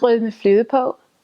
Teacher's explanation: the G's and the R's are all glottal, so they're way back in your throat.